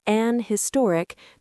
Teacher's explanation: in British English, some people still say an historic because they drop the H sound a bit